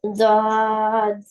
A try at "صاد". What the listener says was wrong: Zod not. Zod comes with dot. Sod, sod.